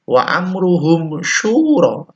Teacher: mim sukun bertemu shin, idhar safawi. Jelas dibaca, jelas ya.